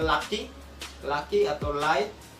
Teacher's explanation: yang bisa dihasilkan contohnya at selanjutnya yaitu letter approximate itu adalah udara yang keluar dari sisi samping lidah